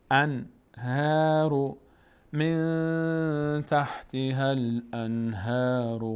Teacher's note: نون ساکن بعدش هی دو چشم آمده، ها حروف حلقی است، اظهار میشه، به همین خاطر ساکنش ظاهره.